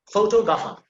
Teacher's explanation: put emphasis on the second syllable